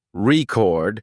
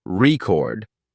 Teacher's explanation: when the stress is on the first syllable record it's a noun like in I bought a record but when the stress is on the second syllable record it becomes a verb